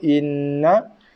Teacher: Nun sabdu dengung wajibul gunah, tekan pada makhraj nun berserta dengung